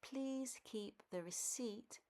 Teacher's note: They pronounce the P. The P in receipt is actually silent.